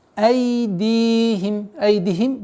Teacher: Здесь в данный момент удлинение в размере двух огласовок, огласовки кесра.